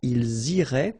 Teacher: make the liaison as well. You get this S and then the vowel after.